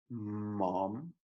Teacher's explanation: The M sound is made with your mouth totally closed and your tongue stationary.